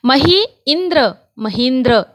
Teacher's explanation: ये दीर्घ ई है, उसके बाद ह्रस्व ई आ गया, दीर्घ ई हो गया